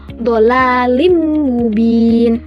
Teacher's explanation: Hurufnya dari idgham bihunna itu ada empat, yaitu yanmu, ya, nun, mim, wau. Suara n masuk ke huruf berikutnya sambil mendenggung. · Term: idgham bihunah